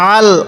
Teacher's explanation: আইনটা একটু চাপ দিয়ে পড়বো। অনেকেই আমরা আইনটাকে হামজা পড়ি, হামজা পড়বো না।